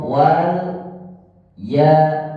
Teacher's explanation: la tipis, to tebal. Pertemuan ini jangan sampai la mengikuti sifatnya to.